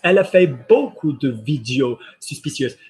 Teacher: when you've got an S on the end of a plural in French, you don't hear the S.